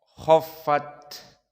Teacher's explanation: kha di sini mufakhamah dikarenakan dia masuk kepada huruf isti'la